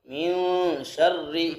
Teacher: یہاں اکفا کریں گے، ناک میں آواز کو چھپائیں گے